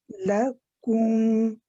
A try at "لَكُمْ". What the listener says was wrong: don't rush for the meme so quick. Say ku first, because you're saying kum, kum, kum, kum, going straight for the meme.